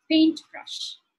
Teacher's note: in the compound words the rules of nouns and adjectives are the same as even if it isn't a compound word so the stress would be on the first syllable